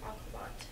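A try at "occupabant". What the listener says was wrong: Yeah, occupaban. She kind of dropped the syllable.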